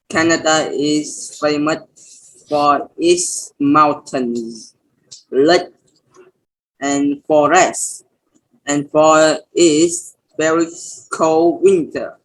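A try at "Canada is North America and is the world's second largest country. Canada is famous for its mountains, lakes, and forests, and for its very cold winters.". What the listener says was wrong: Don't forget your S's, right? You missed all the S's on that. It's famous for its mountains, lakes, forests, and winters.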